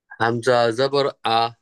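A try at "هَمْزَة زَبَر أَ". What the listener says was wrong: টানা যাবে না, হামজা জবর আ। আ আ দাবায় বলতে হবে।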